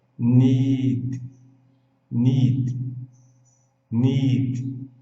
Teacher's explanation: Aqui nós temos o detalhe do I, que é longo, ni, e o D seco, need.